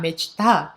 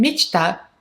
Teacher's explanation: And the stress is on the ah at the end.